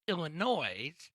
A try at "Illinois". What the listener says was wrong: It's Illinois. But the S is silent.